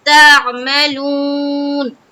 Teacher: تا ادا کرتے ہوئے آواز کو حلق کی جانب لے کر جانا ہے اور وہاں سے پھر عین ادا کرنا ہے